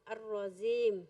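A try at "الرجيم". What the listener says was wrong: No, ar-rajim. Kurang lembut, ar-rajim. Seperti tadi nyebut bajai, jaji, ju, aj, bajai, jim.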